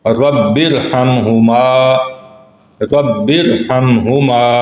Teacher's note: با کے نیچے زیر ہے اور آگے را ساکن ہے جو دوسرے الگ لفظ کا حصہ ہے، تو یہاں پہ اس را کو بھی ہم پر کر کے ادا کریں گے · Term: را پر